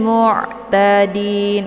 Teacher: ini ainnya sifatnya tawasud ya, dialirkan setengah saja. Ta dibaca pendek, kemudian din, ini merupakan mad arid li sukun, karena ada mad tabi'i yaitu ada ya sukun sebelumnya harokat kisra. · mad arid li sukunnya dibaca panjang, boleh 2, 4 sampai 6 harokat